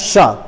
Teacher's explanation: शा बोलते समय जीभ जो है वो तालु की ओर जाती है लेकिन पूरी तरह से ढकती नहीं है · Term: तालव्य